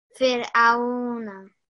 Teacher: when you have the two lean letters, ya and waw sakin, you're going to make the sound very soft and rounded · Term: waw lean